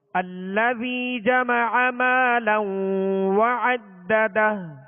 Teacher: اب دونوں دال پر زبر ہے، زبر کو کھینچیں گے نہیں، ٹھیک ہے، اور آخر میں ہائے ہا کو ساکن کر دیں گے.